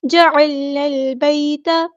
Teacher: نون کو ہم نے لام کے ساتھ ملا دینا ہے، حمزۃ الوصل ہمارا ڈراپ ہو جائے گا